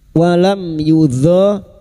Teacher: Sekarang di sini kita wasal atau terus kita uraikan pada kalimat syaiu fathah tanwin bertemu wau idgham bighuna masuk pada huruf wau dan mendengung selama tiga harakat a walam mim sukun bertemu ya idhar syafawi mim sukun dibaca jelas tanpa mendengung